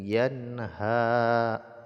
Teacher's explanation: nun sukun bertemu dengan ha, izhar, tidak boleh dengung ya.